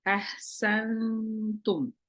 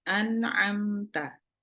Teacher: ketemu huruf Ta Maka nunnya dibaca samar ahsantum beda dengan ini an dibaca jelas si lidahnya ditempelin ke langit-langit